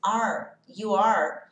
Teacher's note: perceba que a sua língua vai ficar dobrada lá no céu da boca. You are. Não é o que acontece quando a gente junta esse T. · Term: o som do R